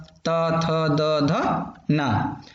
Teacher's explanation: अब ता वर्ग है तो ता से डी, ता वर्ग है तो डी से दंत, दंत से आपका ये जो है ता वर्ग पूरा प्रोनाउंसिएशन होगा